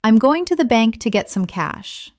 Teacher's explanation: Notice how certain words are stressed: going, bank, get, cash.